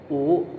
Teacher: vokal belakang atas bundar